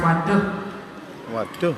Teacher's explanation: You don't elongate that U sound. It stops with the hard H.